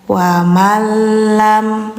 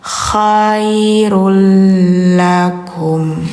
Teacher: Nah, kalau misalnya setelah ada nun atau tanwin ke depannya ada huruf lam, maka bacanya dimasukkan dengan tidak dengung. Jadi, suara N atau tanwinnya hilang. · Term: idgham bila gunah